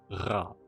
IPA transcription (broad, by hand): ʀa